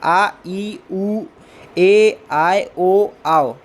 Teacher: और ओ, आ और ऊ, ये जो दो स्वरों के योग से दीर्घ स्वर बनते हैं। इनको बोलने में भी दो स्वरों जितना टाइम लगता है, इसलिए इन्हें दीर्घ स्वर में रखा गया है।